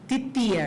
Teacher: é um fonema dental que é bem comum aqui também, né, pra gente.